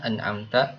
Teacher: Harusnya fathah, an'amta malah diganti an'amtu